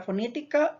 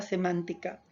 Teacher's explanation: Estas palabras esdrújulas o también conocidas como proparoxítonas son aquellas palabras que llevan la mayor intensidad en la antepenúltima sílaba